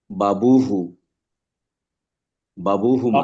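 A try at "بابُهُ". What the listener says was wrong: বাবুহু না, বাবুহু। বা টান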